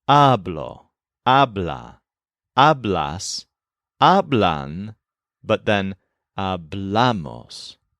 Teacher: most of the present tense forms put the stress on the first syllable, the stem, all except for hablamos.